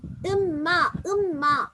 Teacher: முன்னுக்கு இருக்கிற நூன் அப்படியே இல்லாமல் பின்னுக்கு இருக்கிற எழுத்தை டபுள் ஆக்குறோம் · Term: காமில்